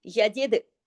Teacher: यजिद में दाल पे कलकला होगा